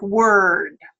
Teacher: it's considered a mid-central, unrounded, rhotic vowel